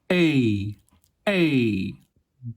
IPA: eɪ